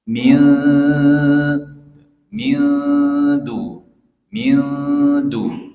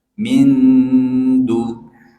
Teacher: Jadi nunnya jangan terbaca jelas, tapi kita baca samar-samar, khafi. Min mildu mildu ya, bukan min, itu kan jelas tuh, mindu. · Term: ikhfa